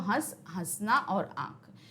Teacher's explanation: ये थोड़ा सा नाक से और थोड़ा सा मुंह से निकलती है हवा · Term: अनुनासिक